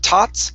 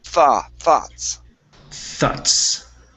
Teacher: Make sure that you're using your tongue between your teeth to pronounce the TH here.